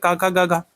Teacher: का वर्ग का उच्चारण स्थान क्या होता है, कंठ होता है